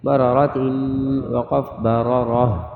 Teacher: گول تا وقف میں گول والی ہا بن جائے گی لیکن جب ہا ظاہر کریں گے تو جھٹکا نہیں دیں گے